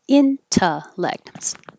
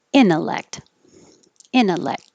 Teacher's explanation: you don't have to have the T at all because now the T is after the N in the unstressed syllable.